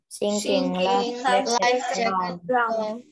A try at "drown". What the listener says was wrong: Okay, so not drone, but drown, okay.